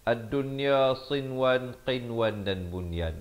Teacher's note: 4 perkataan ini jangan dibacakan dengan dengung, tetapi dibacakan dengan jelas, nyata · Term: Izhar mutlak